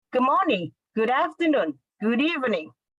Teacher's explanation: So there is no even slight pause or slight tempo. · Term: connected speech